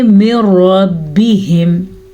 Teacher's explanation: रॉ को पुर पढ़ेंगे, रॉ पे ज़बर की वजह से